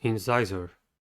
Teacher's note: Incisor has 3 syllables and the stress is at the second one. The first syllable is in, e, the first sound of e, I, e, y.